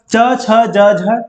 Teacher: च छ ज झ तालु से निकला।